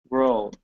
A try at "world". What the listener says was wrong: So you're dropping your tongue too far in your mouth. Okay. So when you pronounce the R, okay, you're saying you're really pronouncing an O when you're dropping your mouth.